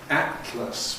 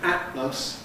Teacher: There's a world of difference between atlas where you have a glottle closure at the beginning and atlas where you have a glottle closure at the end or instead of the alvola closure.